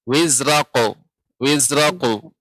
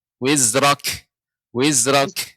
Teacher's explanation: Bukan wizrak karena kaf ini langit-langit bagian atas, tidak bagian lunak.